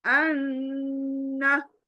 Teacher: नून की आवाज को नाक में ले जाकर पढ़ना है. अन्ना यानी न बोलने से पहले नून को गुनगुनाना है नाक में